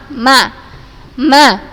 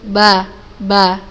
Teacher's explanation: Karena keluarnya mim dan ba, makhrajnya adalah syafatan. Dua bibir.